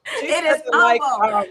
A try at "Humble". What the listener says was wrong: The H is silent. The H silent.